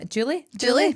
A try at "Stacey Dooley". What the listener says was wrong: It's a D.